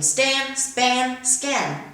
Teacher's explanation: They're unaspirated before the phoneme s